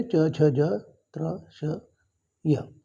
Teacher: जीभ ताळूला लागू राहिली म्हणून तालव्य वर्ण म्हणतात